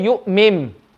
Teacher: We're going to read the meme with gunna.